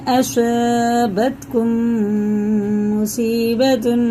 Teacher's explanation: یہ میم ساکن بعد میم آ رہا ہے تو یہ بھی غنہ کر کے پڑھیں گے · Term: ادغام شفی